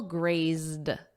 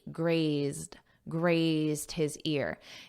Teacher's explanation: Let's look at this verb graze and then in the past simple grazed ZZ. So notice that ZZ and then just a soft D for the Ed